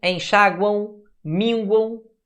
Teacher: tem tritongo no final. Porque esse M tem um som de U